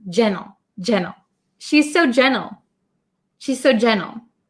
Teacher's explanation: when I say it quickly as an American English speaker I often cut the T sound